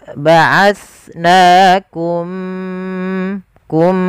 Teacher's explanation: mimnya masukkan ke huruf mim kedua dan ditahan gunnahnya. Ya, ba'asnakum kum, dan bibir kita rapatkan. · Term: idgham mimi